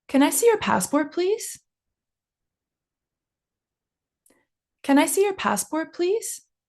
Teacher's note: you have to make sure your intonation is going up at the end